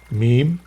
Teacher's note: And Meem, from your lips. With nasal resonance.